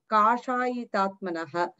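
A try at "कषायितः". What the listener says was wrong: கஷாயிதஹ, கஷாயிதஹ தான் தீர்க்கம் இல்லங்க.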